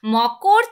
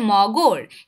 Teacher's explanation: এক কথায় অঘোষ ধ্বনি ঘোষ ধ্বনিতে পরিবর্তন হচ্ছে সেটাই কিন্তু ঘোষিভবন